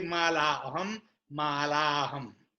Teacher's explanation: Mala aham turned into malaham.